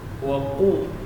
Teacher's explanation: Huruf waw ini huruf rakhawah dan jahar. Qaf syiddah dan jahar. Waqu ya. Kemudian panjang dua harakat.